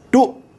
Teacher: if I try to continue voicing this word I can't I say dot and then then it just stops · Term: dead